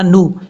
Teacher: وجاء فرعون، عین کو واو سے کنیکٹ کرتے ہوئے لمبا نہیں کریں گے. فرعون، نون کے اوپر پیش ہے، نا نہیں پڑھنا، نو